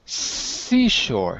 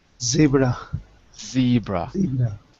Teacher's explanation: The S is voiceless and the Z is voiced. Other than that, they're exactly the same in terms of the position in your mouth.